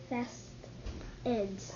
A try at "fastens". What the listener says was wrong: No. The word is fastens. Fastens. So the T is silent. Fastens.